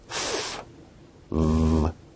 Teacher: Labiodental sounds are produced with the upper teeth and the lower lip